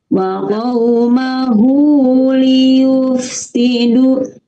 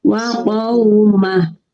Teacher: Kalau ini hak domir bertemu dengan salah satu huruf hijaiyah selain hamzah. Ya, panjangnya itu dua harakat ketika disambung ya, ketika wasol. Wa qaumahu baru panjang itu kalau disambung. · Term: madsilah qasirah